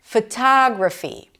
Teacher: Primary stress is on the second syllable. Tada. Longer, louder, higher in pitch.